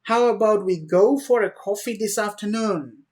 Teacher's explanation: coffee this afternoon my voice went up and up and up so my voice was rising that's how i created the stress